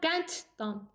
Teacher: Və qənd sözündə də qənd sözün sonudur, sözün köküdür, qənd sözün köküdür və D sonda gəlmişdir. Və dan şəkilçisi samitlə başladığı üçün sondakı D T kimi tələffüz olunacaq.